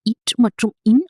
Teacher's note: மேல்வாயை நாக்கின் நுனி மிகவும் அழுத்தமாக பொருத்துவதால் பிறக்கின்றன